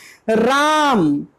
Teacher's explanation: र जो होता है ये प्रकंपित आप लोग लुंठित, हमारी जो जीभ है वो लड़खड़ाती है